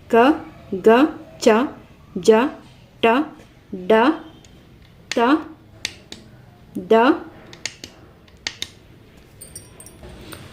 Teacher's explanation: ಅಲ್ಪಪ್ರಾಣ ಅಂದ್ರೆ ಕಡಿಮೆ ಉಸಿರಿನಿಂದ ಉಚ್ಚಾರ ಮಾಡುವ ಅಕ್ಷರಗಳು ನೋಡಿ ಅಲ್ಪ ಅಂದ್ರೆ ಸ್ವಲ್ಪ ಪ್ರಾಣ ಅಂದ್ರೆ ಉಸಿರನ್ನ ತಗೊಳ್ಳುವಂತಹದ್ದು ಉಸಿರನ್ನ ತಗೊಂಡು ಉಚ್ಚಾರ